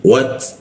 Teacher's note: ujung lidah bertemu gigi. Wat, ada bocor tipis dia